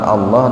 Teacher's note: Lafaz Allah didahului kasroh itu. Jadi lafaz Allah ini dibaca tipis. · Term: tarkik